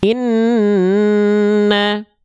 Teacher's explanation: 2 harokat, nama hukumnya adalah gunnah, dibacanya dengung.